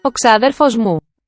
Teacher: And note that it has two high-toned, two accented vowels.